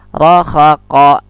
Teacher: kalau ko juga syiddah, tertahan. Dia pun termasuk qalqalah.